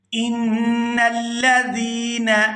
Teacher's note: یہاں نون مشدد پر غنہ کریں گے